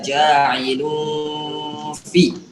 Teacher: Kemudian di kalimat ja'ilun ada tanwin ketemu sama huruf fa, ikhfa, berarti 2 harokat juga.